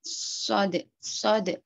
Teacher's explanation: bibir kita agak terangkat, lidah ya terangkat istilah, terus ada desisan angin yang keluar seperti seruit ya. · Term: huruf shod